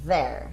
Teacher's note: Então ele fica there e não there, não é um som de D